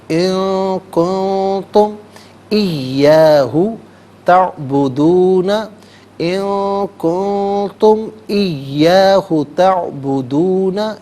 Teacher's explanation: ان میں بھی اور کن میں بھی دونوں جگہوں پر یہاں پر اخفا کیا جائے گا